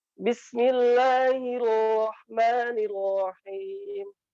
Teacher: Ro itu huruf yang bergetar, tapi getarannya tidak sampai kemudian terlalu banyak begitu.